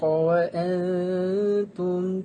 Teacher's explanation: apabila nun mati bertemu dengan ta, hukum tajwidnya adalah ikhfa' hakiki. Hendaklah didengungkan dengan kadar 2 harakat.